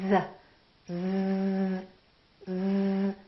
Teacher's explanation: That's because Z is a voiced sound. We're using our vocal cords.